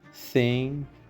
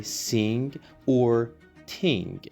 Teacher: the unvoiced th is like an S between the teeth · there is a sizable majority of people who tend to replace the unvoiced TH with S or T